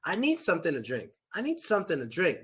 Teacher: I want you guys to understand the stress on to